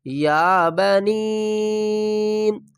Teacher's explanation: یا کو 1 الف کی مقدار کھینچ کر پڑھیں گے اور نون کو 3 الف کی مقدار کھینچ کر پڑھیں گے